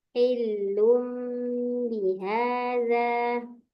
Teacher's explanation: hi-nya jangan dipanjangkan, langsung aja